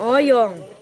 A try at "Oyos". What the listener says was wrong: Oyong. Oyos bukan Oyong. Oyos pakai S dia bukan NG.